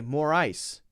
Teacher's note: notice that i'm stressing the i sound